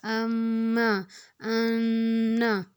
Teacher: اس میں ہم نے غنہ کرنا ہے، ناک میں تھوڑی آواز لے کے اس کو ٹھہرانا ہے، اس کو ہم غنہ کرنا کہتے ہیں۔